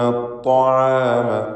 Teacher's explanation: അത്ത്വാം ത്വാ തഫ്ഖീം ചെയ്ത് ഉച്ചരിക്കേണ്ട ഇസ്തിഅലാഇൻ്റെ ഹർഫാണ്. ഷിദ്ദത്തുണ്ട്.